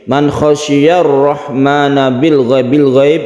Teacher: Man khasyiyar rahmana bil ghaib, ini adalah idhar qamariyah, kebalikan dari idgham syamsiyah. Idhar qamariyah ini lamnya harus terbaca, tidak ada tasydid di sini, jadi lamnya ini harus jelas, itu namanya idhar qamariyah.